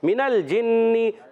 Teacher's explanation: نون مشدد، ایک الف کا غنہ ہوگا